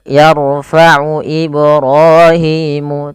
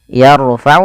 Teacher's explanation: tebalkan huruf ro-nya karena huruf ro sukun didahului fathah. Itu adalah kondisi dia salah satu 14 huruf 14 kondisi ro dibaca dengan tebal, yaitu yarfa'u apabila ada huruf ro sukun didahului dengan fathah atau dhammah.